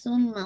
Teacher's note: आपने hold for 2 count and run करना है नेजल कैविटी में। सुम्मा फा की पहले सा की दम्मा गोल कीजिएगा, फिर मीम पे होल्ड कीजिएगा, ये कामिल अकमल करना है।